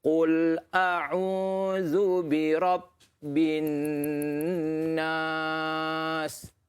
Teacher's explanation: Ni wajib al-gunnah. Dengung 2 harakat.